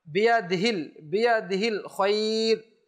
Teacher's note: বিয়াদিল অনেক সময় হা উচ্চারণই করে না, অভ্যাস না করার কারণে, খেয়াল না করার কারণে।